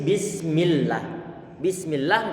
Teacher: lafaz Allah di sinilah yang datang setelah kasrah nggak boleh dibaca tebal tapi perlu untuk dibaca tipis